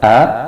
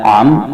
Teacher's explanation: An'amta, a dan am itu berbeda makhrajnya. Hamzah berada pada pangkal tenggorokan di dekat dada, sedangkan ain berada di tengah tenggorokan, sehingga bunyinya ini berbeda.